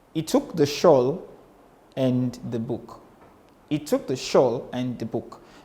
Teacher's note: So, and is low and unstressed. The is low and unstressed. And this gives us a kind of meter in poetry that we call the Pyrrhic meter or the Pyrrhic foot.